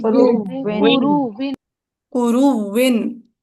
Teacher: پھر ادغام الواو قبلہا فیہا، تو پھر آپ نے کیا کرنا ہے، اس واو کا واو میں پکڑ کے ادغام کر دینا ہے. ادغام کر دینا.